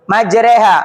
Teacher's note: Imalah itu memiringkan bacaan jadinya e majreha.